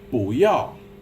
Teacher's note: Now, you might have noticed this bu became bu. When you have two falling tones together, the first falling tone becomes a rising tone. So you get bu yao.